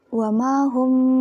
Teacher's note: bacanya berdengung, jadi agak dipanjangkan kan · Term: Ikhfa safawi